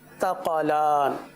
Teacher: سا ہے بغیر سیٹی کے ساتھ ادا ہوگا